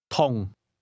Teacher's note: Did you hear the mid-falling tone?